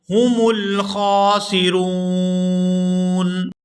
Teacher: یہاں پر وقف کریں گے تو وقف کی صورت میں نون جو ہے یہ ساکن ہو جائے گا